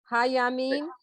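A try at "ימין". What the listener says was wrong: No, not ha. Did you just say ha Yamin, right? You said that. Yamin.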